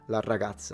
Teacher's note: you can tell I'm Sicilian because I double the R.